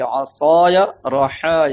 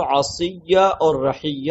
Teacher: قبیلہ ہذیل کے لوگ الف کو یا سے بدل کر کے ادغام کر کے پڑھتے ہیں، تو بجائے عصایہ کے وہ عصیہ اور رحیہ پڑھتے ہیں۔